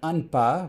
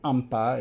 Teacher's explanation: the lips are pursed. Everything else is the same, and that gives you an M instead of an N.